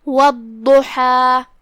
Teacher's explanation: والضحیٰ، کلمت والضحیٰ میں یہاں حرف الضاد ہے۔ ضاد کی ادائیگی زبان کی کروٹ اور اوپر کے داڑھوں کے جڑ سے ہے